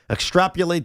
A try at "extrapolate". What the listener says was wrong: You put an R in there.